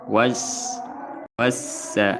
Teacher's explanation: Maka dibaca langsung lam diidgamkan kepada sin. · Was alif lam bertemu dengan sin. Alif lam syamsiyah, hukumnya idgham, idgham syamsi, maka dibaca langsung lam diidghamkan kepada sin.